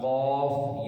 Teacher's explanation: اس کو پڑھا جاتا ہے حلق سے، حلق کو ملا کر قاف، یہ موٹا کیا جاتا ہے۔ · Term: موٹا قاف